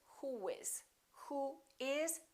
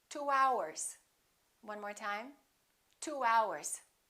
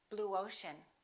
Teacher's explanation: we don't put a little u in there we put a little w sound